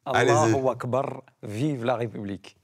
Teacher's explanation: la bonne prononciation, c'est avec le R roulé